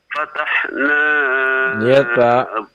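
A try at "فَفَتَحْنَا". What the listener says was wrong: Lihat Pak, ada fa-nya itu ada 2 hurufnya Pak ya.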